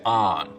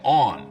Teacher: Now, as we leave New York and head south into Jersey and towards Philadelphia, we cross a major dialect boundary, the on line. Now, north of this line, most people say on, rhymes with don. South of it, they say on, rhymes with dawn. Of course, this doesn't apply at all if you rhyme dawn and dawn, only if you have 2 distinct pronunciations.